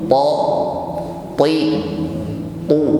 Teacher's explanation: Ada huruf ta di sini yang selalu tebal, sifatnya itbaqa, ya. Ta, ti, tu, ya, bunyinya selalu tebal.